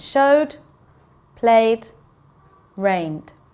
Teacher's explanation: we can hear the D not so much the e it just sounds like there's a duck sound at the end